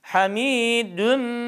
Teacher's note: idğam ma gunnenin idğamı tamdır sadece Ağızdan ses gelir hamidün şeklinde Meci burada cim harfi 4 elif miktarı uzatıyor del